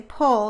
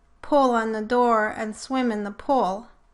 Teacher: So some talkers may say pull for both pull and pool.